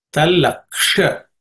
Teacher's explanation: This ksha is uk and sha. The sha is cerebral sha. Tip of the tongue should point towards the roof of the mouth.